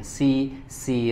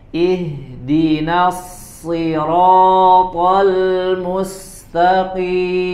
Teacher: huruf Shad harakatnya kasrah jadi tetap harus dibaca tebal ya Jangan tipis kalau tipis malah dia Jadi huruf Sin jadinya si si ro harus dibaca dengan tebal tidak terpengaruh oleh